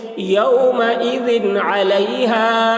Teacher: یومئذ علی، ہا الف زبر ہا، الف سے پہلے زبر ہے، الف مدہ ہوا، اس لیے الف مدہ کو ایک الف کے برابر کھینچ کر پڑھیں گے۔ یومئذ علیہا، یہاں پر اظہار ذال میں ہو رہا ہے، ذال کے نیچے دو زیر کی تنوین ہے، اس کے بعد عین آ رہا ہے حروف حلقی میں سے۔